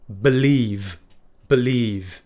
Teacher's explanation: it ends with a voiced consonant V so it's not F which would be the unvoiced version an